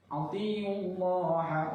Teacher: Allah lam jalalah bertemu didahului harakat dhammah, itu juga bacanya tafkhim tebal